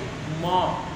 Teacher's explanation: ઓષ્ઠવ અને નાસિકા એ બંનેની ભેગાથી એનું ઉચ્ચારણ કરવામાં આવે છે. દાખલા તરીકે મ, તો એ મ અને મ ની અંદર રહેલો અ એ પાછો છે એ નાસિકાવર્તી છે, એટલે કે હોઠ અને નાક એ બંને જગ્યાએથી બોલવામાં આવે છે.